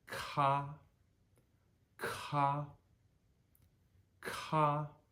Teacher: So we would normally say ka, just ka, but we need to breathe over top of it a little more than we naturally feel like we want to.